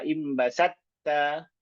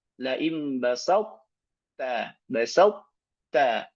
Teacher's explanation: Ini idgham nakis karena masih menyisakan sifat dari to, tidak langsung masuk ke ta.